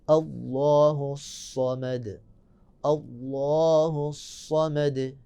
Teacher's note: دوسری آیت میں اللہ کو موٹا، اور صاد میں صفت صفیریہ اللہ الصمد، آواز جاری رہے گی، صاد کو موٹا پڑھیں گے اور صفت صفیریہ کی وجہ سے سیٹی کی آواز پیدا ہوگی